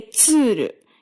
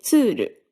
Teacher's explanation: You don't say tsuru, you say tsuru with significantly less air coming through it